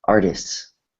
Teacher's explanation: so that t is kind of weak because it comes after a consonant